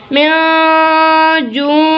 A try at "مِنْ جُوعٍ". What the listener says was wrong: आइन की आवाज निकालनी है। min जूअ। min जूअ।